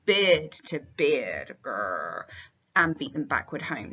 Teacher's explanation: plosive alliteration here in the repetition, beard to beard, and then beaten backward. So really, really, really punchy.